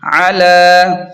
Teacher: یحضو، اس طرح عین زبر ع، لام کھڑا زبر لا، علی، عین کو واضح کریں اور لام کو تھوڑا سا کھینچیں کھڑا زبر کی وجہ سے